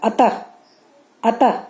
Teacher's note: और विसर्ग स्वर के बाद यह भी आता है, और इसका उच्चारण ह की तरह होता है। अतः, अतः जैसे हम लोग बोलते हैं ना, अतः अ त के बाद 2 ठो बिंदु दिया जाता है, उसे विसर्ग कहा जाता है।